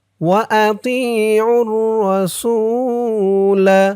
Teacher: সু এক আলিফ টান পেশের পরে ওয়াও সাকিন।